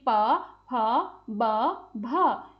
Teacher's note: ओष्ठ्य व्यंजन में हमारे होठों से बनते हैं वो, जैसे कि प, फ, ब, भ। इन्हें बोलते समय हमारे दोनों होठ सक्रिय हैं, इसी वजह से इन्हें ओष्ठ्य व्यंजन कहते हैं।